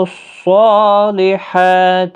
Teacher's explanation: صاد مستعلیہ ہے، موٹا بھی پڑھیں، پر پڑھیں